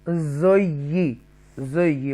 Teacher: یہاں پر تشدید ہے اور یا مشدہ ہے, ایکسٹرا سٹریس کے ساتھ پڑھیں گے ٹوائس ٹائم